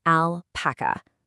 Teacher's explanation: That perfect, clean ah sound right at the start.